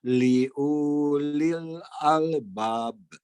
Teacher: di sana U-nya tidak dibaca panjang ya